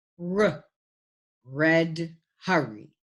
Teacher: it is a voiced sound and does not have a voiceless cognate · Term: Glides